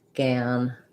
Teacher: When I'm saying gin, my whole tongue is lifted and pretty high. When I'm saying gan, the front of my tongue is down and the back of my tongue is lifting. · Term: A vowel